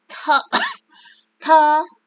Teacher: To, bukan de, tapi te. Lalu huruf T seperti melafalkan TH, ada angin yang keluar